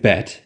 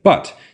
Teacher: your tongue goes forward for a and then pulls back for aa